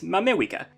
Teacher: the main tokipona name for the united states is mamewika using wa as an approximation for english r